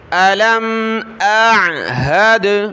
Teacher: حمزہ کو عین کے ساتھ ملانا تو حمزہ کی آواز آئے پھر عین کی